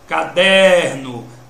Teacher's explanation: Der. A sílaba tônica é o der.